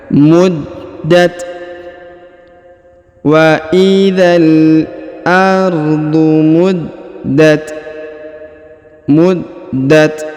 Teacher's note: huruf da berharakat tasdid maka kita tahan dan kita tekan